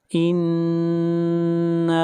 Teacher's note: इन्ना, नून के ऊपर शद है, गुन्ना होगा। इन्ना, और नून को खींच कर पढ़ेंगे एक अलिफ के बराबर। यहाँ पर अलिफ मद्दा है और इस मद को मद असली कहते हैं।